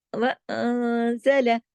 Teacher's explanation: تھوڑا سا غنہ ہوگا، آواز تھوڑی سی اندر ناک میں جائے گی نون پہ، وَأَنزَلَ، اور یہ نون جو ہے باریک لیٹر ہے، یہاں موٹے آواز میں موٹا پن نہیں آنا چاہیے، باریک رہنا چاہیے۔